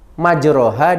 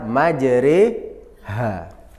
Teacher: bacaan imalah, artinya memiringkan bunyi fathah pada kasroh